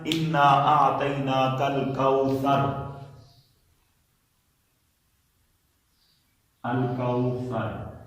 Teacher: अब देखें इसमें रा जो है मुस्तालिया में है, रा साकिन है, उससे पहले फा है, इसके ऊपर जबर है तो रा को हम मोटा पढ़ेंगे